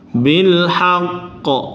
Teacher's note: Qaf kalau tasdid kemudian disukunkan, dia agak ditekan sebentar, ada nabernya.